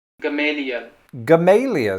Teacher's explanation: so they just sort of dropped the final l which is a little cavalier